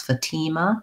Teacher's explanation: the convention would probably be second syllable stress fatima but uh we might people might also say fatima fatima